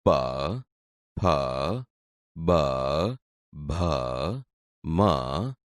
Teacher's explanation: બોલતી વખતે હોઠ એકબીજાને અડે છે. તેથી આ ઓષ્ઠ્ય વ્યંજન છે.